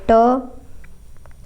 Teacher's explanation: ट अघोष होता है अल्प प्राण होता है